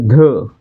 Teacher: ध चा उच्चार करताना ह चा उच्चार होतोय म्हणजे ह च चं प्राबल्य आहे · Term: महाप्राण